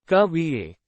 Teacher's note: the voice falls towards the end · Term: intonation